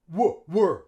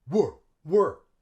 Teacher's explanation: We use schwa instead of the long E.